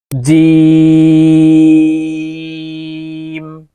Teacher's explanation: জিম হরফ জিহ্বার মধ্যখান থেকে উচ্চারণ করতে হবে